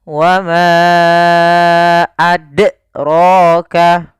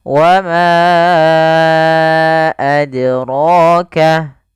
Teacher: Nah, qalqalah ini artinya memantul. Maka huruf dal ketika dia sukun, dia harus ada pantulannya.